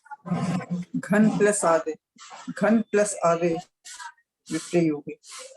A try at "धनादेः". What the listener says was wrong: ध है ना दीदी, वो घ नहीं है ना, ध है ना? घ नहीं है ना, ध है ना, धन वाला ध।